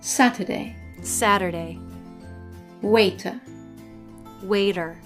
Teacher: in American English when the letter T is in the middle position in a word it sometimes changes to a soft D this happens either when it's between two vowels or when it's